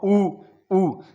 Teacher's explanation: मेरे होठों का इसमें पूर्ण रूप से योगदान है, दोनों ही ओष्ठ से उच्चारित है